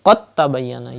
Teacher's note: you don't pronounce the sakin letter, you skip the sakin letter, and you join the mutaharrik letter with the mushaddad letter